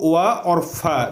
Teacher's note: व और फ का उच्चारण स्थान दांत और ओठ से होता है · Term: दंतोष्ठ